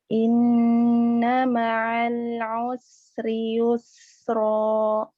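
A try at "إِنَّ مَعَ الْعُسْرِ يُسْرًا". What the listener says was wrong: Sisa ainnya jangan ditebal. Ma'a. Tipiskan. Ma'a.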